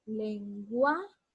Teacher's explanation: Aquí está la mayor fuerza de voz, entonces la sílaba gua, ahí es la sílaba donde recae el acento.